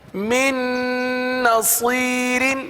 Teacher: من کا جو نون ہے وہ دوسری نون میں مل جائے گا، مدغم ہو جائے گا